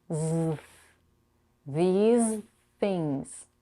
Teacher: we have to connect the Z to the th sound